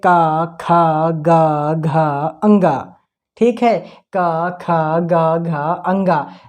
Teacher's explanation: इनका उच्चारण स्थान कंठ होता है, क्योंकि इनका आवाज कंठ से आता है।